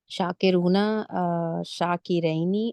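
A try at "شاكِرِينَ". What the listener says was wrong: रैनी यहाँ तो नहीं आएगा ना।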